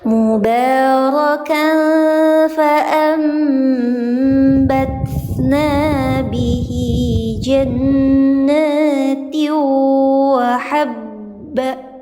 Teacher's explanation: Bunda bisa paham namanya iklab, cara bacanya disamar dan dengungkan